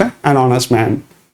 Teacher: so in honest, H is a silent, so it becomes an honest man